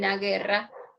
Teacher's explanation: Pero ahí tienes la UE, no hay concurrencia porque no se escucha la U. No es diptongo. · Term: falso diptongo